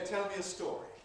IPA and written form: ˈtel mi ə ˈstɔːri (Tell me a story)